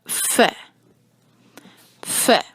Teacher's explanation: اس میں ساتھ تھوڑی سی پھونک کی آواز شامل کیجیے گا، یہ بڑی آواز، اس میں تو پھر یہ ہو جائے گا ف۔